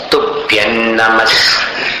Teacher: तुभ्यं न जैसा उच्चारण है अनुस्वार का